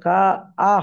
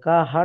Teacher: হামজা যাবার আ, তাহলে কা আ হবে, কা হা নয়, কা আ কা হবে।